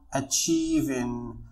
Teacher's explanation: فn g هو consonant ويسمى بnasal sound بمعنى أن الصوت عندما نقوم بنطق هذا consonant الصوت يخرج على مستوى الأنف